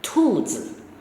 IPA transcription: tùzǐ